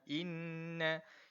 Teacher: Kita kena wajib dengung tuan-puan. Wajib dengung. Dengung macam mana? Dengung dua harakat. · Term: wajibul gunnah